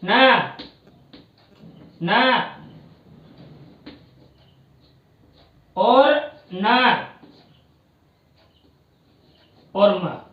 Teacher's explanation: देखिए ये जो पांचों वर्ण है वो वर्ग के पंचम वर्ण है, और ये संवार, नाद और घोष के अंतर्गत बोले जाते हैं और अल्प प्राण के द्वारा उच्चारित होते हैं